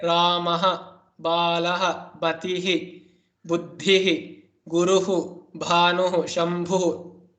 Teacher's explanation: you have to pronounce the Visarga completely as you would do at the end of a sentence